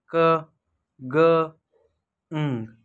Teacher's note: the sound produced by raising back of the tongue to soft palate, कि हमारी बेक of tongue है वो soft palate पे जाके स्ट्राइक करती है और जो साउंड्स प्रोड्यूस्ड होती हैं वो हैं क ग ंग, ये वेलर साउंड्स हैं। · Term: velar